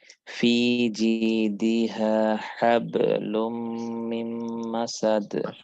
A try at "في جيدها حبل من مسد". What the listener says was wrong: মাশাআল্লাহ।